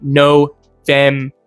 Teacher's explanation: Next up, we have November, November, November, which is also, I think, pretty straightforward. Obviously, it is not an ah sound, it is an O sound, so it'll be November.